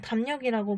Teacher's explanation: 유음이 비음의 영향을 받아서 리을이 니은으로 발음될 때도 있다고 합니다